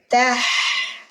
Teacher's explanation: Jadi rohwa di huruf ha, napas kita yang bunyi. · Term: hamas